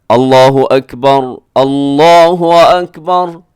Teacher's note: आप इसको साकिन भी पढ़ सकते हैं, रा को साकिन पढ़ सकते हैं। कैसे, अल्लाहु अकबर, अल्लाहु अकबर, ऐसे साकिन।